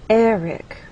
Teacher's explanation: Stress is on the first syllable, builds as one syllable, and flutes receives our main stress. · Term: word stress